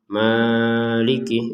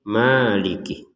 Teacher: jadi kita panjangkan 2 harokat saja. Maliki, jangan sampai lebih.